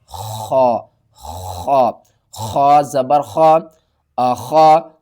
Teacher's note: خا کو حلق کے سب سے اوپر والے حصے سے ادا کرنا ہے۔ جب آپ نے خا کو پڑھنا ہے تو آواز بھاری ہمارے جو حلق کا اوپر والا حصہ ہے نا، اس سے ایک آواز آئے گی۔